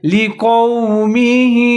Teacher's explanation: موٹا کر کے پڑھنا ہے، آگے میم کے نیچے زیر ہے، ہا کے نیچے کھڑی زیر ہے، اس کو تھوڑا سا لمبا کر کے پڑھیں گے